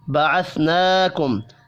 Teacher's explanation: کھڑی زبر کو ایک الف کے برابر کھینچ کر پڑھنا ہے